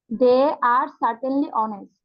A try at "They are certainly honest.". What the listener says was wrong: They're certainly honest. ওকে, একটু জোর দিতে হবে।